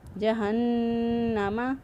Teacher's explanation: فی ناری جہنم، جہنم، نون مشدد، نون مشدد پر ہمیشہ گنہ ہوتا ہے، اس لیے یہاں پر گنہ کرتے ہوئے نون کی آواز جو ہے وہ ادا کی۔ جہنم، اور نون کی آواز جو ناک میں ٹھہرائیں گے وہ ایک الف کے برابر ٹھہرائیں گے